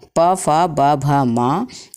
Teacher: उपोपधमानिया नाम ओष्ठौ, अर्थात ऊ और प वर्ग प फ ब भ म का उच्चारण स्थान हमारे होठ होते हैं। दोनों होठों से हम इनका उच्चारण करते हैं।